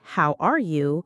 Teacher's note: Raise your pitch on R to sound curious and engaged.